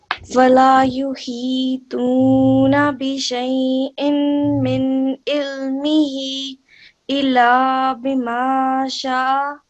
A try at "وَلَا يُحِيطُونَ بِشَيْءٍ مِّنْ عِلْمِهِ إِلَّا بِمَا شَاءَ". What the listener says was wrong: So again, we would prolong here much more because we've got a madda and we've got a vertical kasra as well. Again, we have to connect here, so a bit more emphasis on the lam mushaddad. So it will be أعوذ بالله من الشيطان الرجيم بسم الله الرحمن الرحيم ولا يحيطون بشيء من علمه إلا بما شاء. It will be من علمه إلا بما شاء.